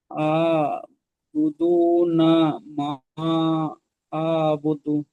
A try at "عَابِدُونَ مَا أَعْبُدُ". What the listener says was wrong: বু বলিনি আমি, এখানে বি বলেছি। বি দু নামা মা আ'বুদ।